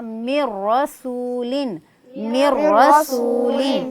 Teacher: اگر نون ساکن نون تنوین کے بعد را آئے گی تو ادغام بلا غنہ کیا جائے گا، یہاں ملایا تو جائے گا، مدغم کیا جائے گا لیکن غنہ نہیں کیا جائے گا، اس لیے ہم نے اس کو پڑھا من رسول من رسول. · ہم نے ابتداءً عرض کیا تھا کہ اگر نون ساکن نون تنوین کے بعد را آئے گی تو ادغام بلا غنہ کیا جائے گا، یہاں ملایا تو جائے گا، مدغم کیا جائے گا لیکن غنہ نہیں کیا جائے گا